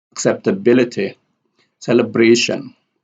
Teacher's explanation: accept here has a secondary stress and we have ability here has the loudest stress or the strongest stress.